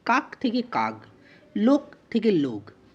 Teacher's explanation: লোকের ক্ষেত্রেও তাই, কটা গতে পরিণত হয়েছে, এখানে অঘোষ ধ্বনি ঘোষ ধ্বনিতে পরিণত হয়। তাহলে অঘোষ ধ্বনি যখন ঘোষ ধ্বনিতে পরিণত হয় উচ্চারণের সময়, তখন সেই রীতিকে বলা হয় ঘোষী ভবন।